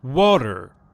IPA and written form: ˈwɑːtər (water)